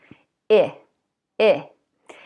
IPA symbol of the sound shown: I